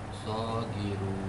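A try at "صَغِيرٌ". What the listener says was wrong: Saghirun. Bukan ki. Ri kayak tadi.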